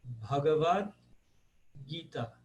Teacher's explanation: Gita, Gita, porque ele não pode ser Gito, tem que ser Gita, tem que ser aberto. Mas ele é uma paroxítona com o último A um pouco longo.